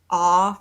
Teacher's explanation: is produced with a constriction close to the back of your mouth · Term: back mouth sound